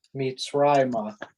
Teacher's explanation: the second pashta tells us that that's where the accent is so the accent is on rye